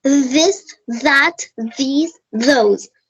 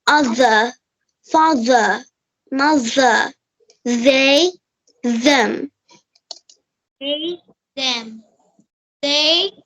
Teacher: give some pressure to your vocal cords and also make some friction between your tongue and teeth